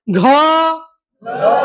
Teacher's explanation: आकाराचे प्रबल्य जाणवत त्याला म्हणायचं महाप्राण